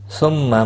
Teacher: هو الذی خلق لکم ما فی الارض جمیعا ثم استوى إلى السماء فسواهن 7 سماوات۔ ثم میم مشدد پر غنہ ہوگا